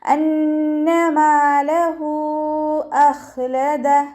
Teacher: ഇവിടെ നൂൻ ശ്രദ്ധ വന്നിട്ടുണ്ട്, അപ്പോൾ നല്ലോണം മണിച്ചിട്ട് ഉച്ചരിക്കുക.